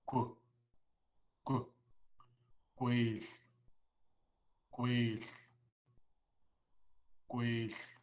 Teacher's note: So, in English, the G makes a G sound. But now with the W on there, we purse our lips when we say it.